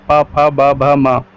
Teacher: इनका उच्चारण स्थान ओष्ठ है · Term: प वर्ग